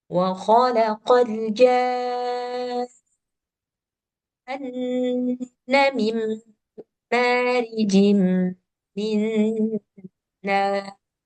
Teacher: Jadi dibaca 6 harkat, agak ditekan sedikit di nunnya, baru didengungkan yang nunnya.